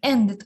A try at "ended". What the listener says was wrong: Yeah, ended. Don't say T. It's ended. So can you feel that ended that should be pronounced as it sound?